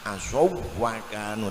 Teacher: Tidak boleh dengung karena ini tidak ada nun, itu wawu bertemu wawu harus seperti wawu tasdid asaw wa kanu, kencang cepat asaw wa kanu, tidak boleh asaw wa kanu ya.